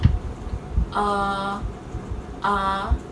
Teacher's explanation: the position of the tongue is central and the position of the mouth is open